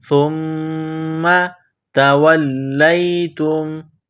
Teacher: تا کو نرم کرنا ہے، میم مشدد ہے، غنہ کریں گے، آواز ناک میں چھپائیں گے